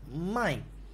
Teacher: the fourth tone you have to pronounce louder it's more powerful it's a falling tone